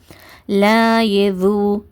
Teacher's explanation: உங்களுடைய நுனி நாக்க நல்லா கூர்மையாக்கிட்டு மேல்பற்களுடைய இரண்டு பல்ல பதிச்சு சொல்லணும்